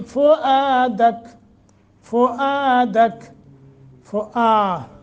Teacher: फुआ हमज़ा और आगे अलिफ है, लिहाजा एक सेकंड या एक अलिफ के बराबर मद करेंगे। फुआदक रुक गए तो काफ मुतहर्रिक नहीं रहेगा, काफ के ऊपर जो ज़बर है इसको साकिन कर देंगे।